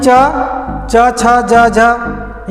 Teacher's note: ये जीभ जो है तालु में स्पर्श करती है, स्पर्श ही नहीं करती बल्कि घर्षण भी करती है। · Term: च वर्ग